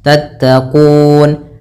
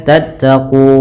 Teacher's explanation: Sebelum huruf nun sukun ini huruf mad, maka yang awalnya kuna itu 2 harokat, karena kita wakafkan menjadi dia mad arid disukun, kita boleh baca 2 harokat, boleh 4 dan boleh pula 6 harokat